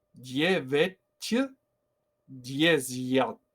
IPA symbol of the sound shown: j